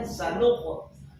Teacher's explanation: Miring ke fathah itu paling cakep. Miring ke dhammah boleh ketika sebelumnya dhammah seperti sanuqo. Itu boleh ke u tuh. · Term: qalqalah